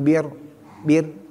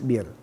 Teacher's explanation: kalau RO di kasrah ya atau langsung di kasrah adalah tarkik tipis jadi meringis